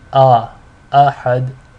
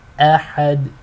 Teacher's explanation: this hamza right here is a light letter, but you will hear many individuals making it heavy when they read it. So you will hear ahad.